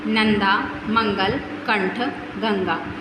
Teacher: अनुस्वार का उच्चारण स्वर के उपरांत किया जाता है तथा इसका उच्चारण करते समय नाक से ध्वनि का संचार होता है लिखते समय स्वर तथा व्यंजन के ऊपर बिंदु के रूप में